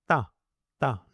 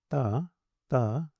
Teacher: They're clear dental sounds, so make sure that the tongue touches the teeth directly and not somewhere behind them.